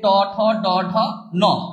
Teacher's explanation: অর্থাৎ তালু আর দন্তমূলের মাঝখানে যে অংশটা সেটাকে কি বলা হয়, মূর্ধা। দেখবেন যে ট ঠ ড ঢ ন এই বর্ণগুলো বা ধ্বনিগুলো উচ্চারণ করার সময় আমরা কিন্তু দাঁতের যে গোড়া আর তালুর মাঝামাঝিতে একটা ধাক্কা লাগে, এই জন্য এই বর্ণগুলোকে বলা হয় মূর্ধন্য। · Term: মূর্ধন্য ব্যঞ্জন